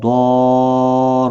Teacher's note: الف مدہ ہے، ایک الف کی برابر کھینچ کر پڑھیں گے، ضاد مستعلیہ ہے، پر پڑھا جائے گا · را زبر کی وجہ سے پر پڑھا جائے گا